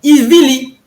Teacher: Et le resh, dans nos langues, se réalise très souvent en lamed.